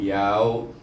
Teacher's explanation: Kemudian yaw di sini bertemu dengan waw yang mati, dibaca dengan lin. Sebab sebelum waw baris di atas, waw mati, jadi baca dengan lin